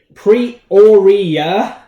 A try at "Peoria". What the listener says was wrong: There's no pre. It's Peoria. Peoria.